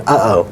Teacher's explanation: Air is stopping from coming out. You can't get air out in the middle of uh-oh, and you're stopping it. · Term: glottal stop